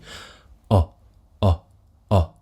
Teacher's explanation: So the main thing is this sound is round on the lips. Round but relaxed. Don't make it tight and pushed forwards. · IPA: ɒ